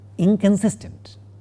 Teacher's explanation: the negative prefix, even though we write as in, is not na, is not a dental nasal. It is a velar nasal, which is like na.